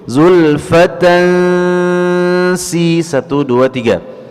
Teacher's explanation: ada tanwin berjumpa dengan huruf sin, ikhfa haqiqi, ya, ditahan dua harakat dengan dengung di dalam khayshum